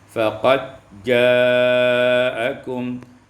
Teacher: diidghamkan dal pada jim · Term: idgham dal fil jim